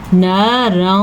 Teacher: نارا یہاں پہ خوا کا قاعدہ ہو رہا ہے یعنی نون تنوین کو ہم نے چھپا کے پڑھا ہے اور را کو ہم نے پر پڑھا ہے